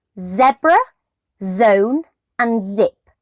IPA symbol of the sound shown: z